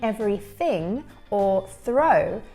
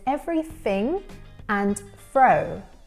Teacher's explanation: we hear the reduction of the TH sound